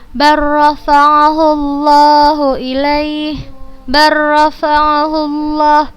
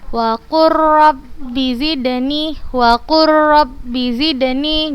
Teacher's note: Lam sukun setelahnya ra berharokat. Cara membacanya langsung dimasukkan ke huruf yang kedua, ke huruf yang berharokat dan dibacanya tanpa gunnah. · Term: idgham mutaqarribain